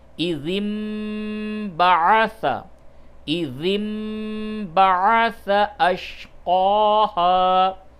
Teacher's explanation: اور اس قاعدے کو قلب کہتے ہیں، قلب، قلب کے معنی بدلنا، یعنی نون کی جو آواز ہے اس کو میم سے بدل کر کے پڑھیں گے